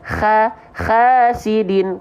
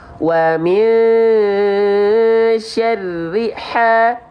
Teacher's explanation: Dia punya sifat hams, karakteristiknya nafasnya berbisik. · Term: H kecil